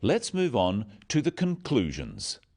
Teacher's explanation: Stressing conclusions because it's the key word in this sentence. The other words stressed are the key words for understanding. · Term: sentence stress